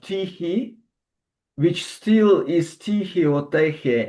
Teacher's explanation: glottal fricative still is preserved and not anchored on the previous stop